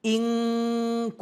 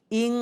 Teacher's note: ketika nun mati bertemu kaf pada kata inkuntum. Maka yang keluar adalah. Suara eng, bukan m. Tapi eng, jadi inkuntum.